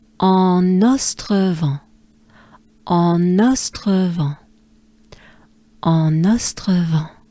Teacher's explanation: So again, marque en, and then we have to link the N actually here. There's an N at en that we can't hear, but well, we will link it to the next word.